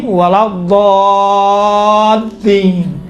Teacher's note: دیکھیں خود لام ہے نا، لام یقیناً حروف لین میں سے باریک پڑھا جاتا ہے، کاملاً باریک ہے، لیکن یہاں پر لام چونکہ لام کے اوپر تشدید ہے، تشدید کی وجہ سے لام کا تلفظ تھوڑا سا موٹا اور ضخیم اور غلیظ طریقے سے کیا گیا ہے